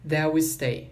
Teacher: Aqui o T do that, o T final do that, não vai ser pronunciado.